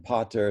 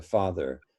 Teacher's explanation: shifts from voiceless stops like p to the voiceless fricatives like f as in potter to father and and so we also have the t shift to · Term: great consonant shift